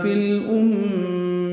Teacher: فی الامیین فا کو لام سے ملائیں گے